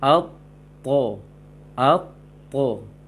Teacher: ujung lisan tetap belakang gigi atas, namun pangkal dengan tengahnya sangat dominan ke langit-langit terangkat dia.